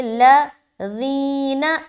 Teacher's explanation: اب یہاں پر نون مشدد کا غنہ کر رہے ہیں، اس کے بعد لام میں ملا دیا، لام کو باریک رکھ رہے